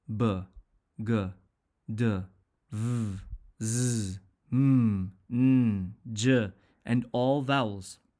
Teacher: some sounds cause our throats to move when we pronounce them they cause the vocal cords in our throats to move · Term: voed sounds